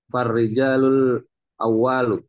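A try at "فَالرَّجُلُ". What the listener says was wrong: Farrajulu bukan rijal.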